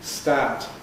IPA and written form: staːt (start)